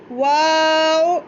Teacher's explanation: अपने होंठों को गोल किया और हमने वाव अदा किया। ठीक है, वाव, इसको हमने वा आ वाला साउंड खींचना है, थोड़ा खींच कर अदा करना है, तो हमारा जो होंठ गोल करके वाव बहुत अच्छे से अदा हो जाएगा। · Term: गोल होंठ